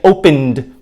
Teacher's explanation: we have a voiced sound which means that the vocal cords are vibrating we in turn make a voiced ed sound